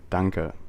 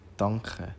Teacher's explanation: the shift from k to kh or ch at the beginning of words, when doubled, after r or l, and after m or n.